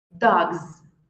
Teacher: que o último som ali antes do S for vozeado no lugar do S você vai falar um som de z